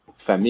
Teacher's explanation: if you notice I don't say the L sound